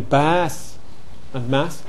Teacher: bath and past had begun to lengthen